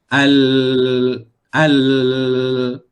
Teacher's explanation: Di bahagian tepi kiri dan kanan bahagian lidah tu, aliran suara akan keluar melalui situ. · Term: Huruf Lam